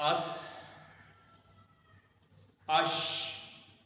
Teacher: سین باریک پڑھنا ہے اور اس میں سیٹی ہوگی